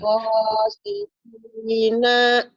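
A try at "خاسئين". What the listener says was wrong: Nanya pendek. Ujungnya pendek.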